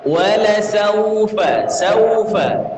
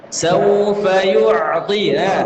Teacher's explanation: Sa tidak monyong, ketemu waw monyongkan.